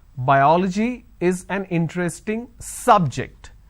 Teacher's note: biology is an interesting subject I am stressing on the first syllable